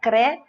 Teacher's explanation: você lê a palavra normalmente, sem pronunciar o S